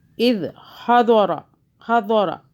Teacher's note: اذ، ذال کو سافٹ پڑھنا ہے، زبان کو ہلکا سا باہر کریں پھر ادا ہوگا۔ اذ حضر، یہ ضاد ہے، موٹا پڑھیں گے